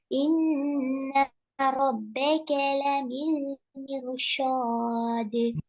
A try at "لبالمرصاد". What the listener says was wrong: மிர்ஷாத் எல்லாம் வருது, ஷாத் ஷீன் எல்லாம் போகுது. மிர்ஷாத் அப்பலே ஏன்பா ஷீனா வந்து மிர்ஷாத்.